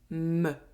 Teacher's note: For [m], my lips are shut and I open them in one go